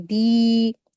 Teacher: दाल के साथ या मदिया का रूल हो रहा है। इसको दो हरकात खींचेंगे।